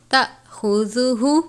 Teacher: لا تأخذہ، الف سے پہلے زبر ہے، الف مدہ جزم کی علامت ہے، جھٹکا دے کر پڑھیں گے۔ تأخذہ، خا کو پر پڑھتے ہیں، زال کو نرمی سے پڑھتے ہیں، الٹا پیش ہے، اس کی مقدار بھی ایک الف کی جتنی ہے۔